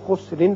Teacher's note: یہاں را کے نیچے دو زیر تنوین ہے. جب آپ اگلی آیت سے ملانا چاہیں گے تو خسرن پڑھیں گے اور اس کے ساتھ ساتھ را باریک ہوگا، اور اگلی آیت میں چونکہ پہلے حمزہ آ رہا ہے لہذا یہاں اظہار بھی ہوگا، اظہار حلقی، اور وقت کی صورت میں را پر ہوگا اس لیے کہ پہلے پیش آ رہا ہے.